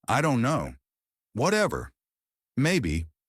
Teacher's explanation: Flat intonation used when you're bored, tired, or not interested.